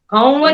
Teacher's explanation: ઘઉં ઉપર પણ તમારું નેઝલાઇઝેશન આવે જ છે.